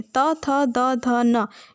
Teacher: इसके बाद चौथा वर्ग जिसे दंतव्य व्यंजन कहते हैं, त, थ, द, ध, न। इनको बोलते समय जीभ हमारी दांतों से टकरा रही है, इसलिए हम इसको दंतव्य व्यंजन कहेंगे।